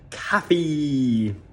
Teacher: Então é importante você prolongar esse I no final.